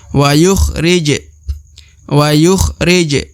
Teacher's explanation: huruf ja berharakat Sukun adalah huruf Qalqalah atau huruf pantul maka dia harus dipantulkan